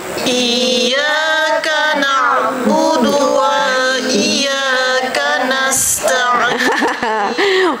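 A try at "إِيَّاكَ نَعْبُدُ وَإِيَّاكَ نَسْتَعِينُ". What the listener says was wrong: Waw tu jangan dipanjangkan pula. Ada tasydid wa iyya situ Lagi sekali.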